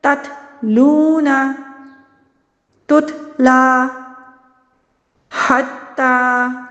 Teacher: زبان کی نوک ثنایا علیہ کی جڑ سے لگ رہی ہے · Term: تا